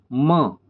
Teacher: म ओष्ठ प्लस नासिका। म का उच्चारण कैसे? ओठ और नाक से हो रहा है